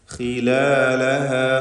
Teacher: ഖാഇന് തഫ്ഖീം കൊടുക്കണം, കസ്റായതുകൊണ്ട് കുറഞ്ഞ തഫ്ഖീം മതി, ഇസ്തിഅലാഇൻ്റെ ഹർഫാണ്.